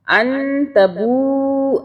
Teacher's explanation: نون کو غنہ کیا، اخفا کیا نون کے اوپر ہم نے 2 سیکنڈ کے لیے، کیونکہ آگے تا کا حرف ہے، اخفا کا حرف ہے، ٹھیک ہے.